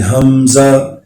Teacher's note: حمزہ کی آواز بھی حلق کے نیچے سے نکلے گی